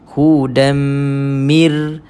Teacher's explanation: maka kita akan dapati Nun ini sudah tidak ada sebutannya sebab dimasukkan secara sempurna · Nun telah dimasukkan ke dalam ra secara sempurna. Sebab itulah kita hanya dengar mir. So mir ini idgham sahaja, memasukkan sahaja, tapi tidak dengungkan bacaan mir rabbihim. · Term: Idam